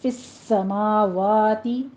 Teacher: سین کے اوپر تشدید ہے، سختی سے ادا کیجیے سیٹی کی آواز کے ساتھ، اور سماواتی نہیں ہے، انڈرلائن کر لیجیے اس کو، سماواتی الف مدہ ہے، یعنی کہ فتحہ قائمہ ہے، 2 کاؤنٹ کرنا ہے۔